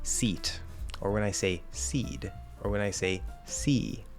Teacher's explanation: guess what that e is the same length every time